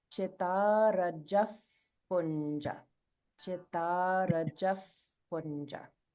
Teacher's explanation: So we pronounce the visarga here as an f sound, Yeah. f, like an English f, because it's followed by the pa sound.